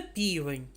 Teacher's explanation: що літера м'який знак немає звуку перший звук у цьому слові п це приголосний звук але його пом'якшує наступний голосний звук тому звук п ми позначаємо як М'який приголосний двома рисками другий